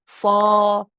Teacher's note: nice and heavy the back of the tongue is up we're making like a oh oh oh oh oh sound oh